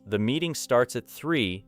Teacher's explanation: the time may be the most important information, so 3 should receive clear stress